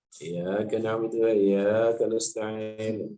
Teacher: Hamzah tasdidnya dibuang, tidak terbaca. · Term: mengurangi tasdid